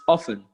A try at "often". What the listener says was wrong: Yeah, the T is silent. You don't pronounce the T.